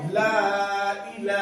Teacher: लाम खड़ा जबर ला। खड़ा जबर बराबर होता है तो अलिफ मद्दा को खींच के पढ़ेंगे